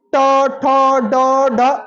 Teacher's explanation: आपका जीभ मुड़ रहा है मुड़ के ऊपर छू रहा है ट ठ ड ड ड ठीक है मुर्धा स हो गया · अब जैसे यही है, आप जरा बोलिए ट, ठ, ड, ढ। आपका जीभ मुड़ रहा है, मुड़ के ऊपर छू रहा है। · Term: मूर्धन्य